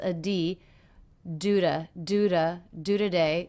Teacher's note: the T here is really more of a flap sound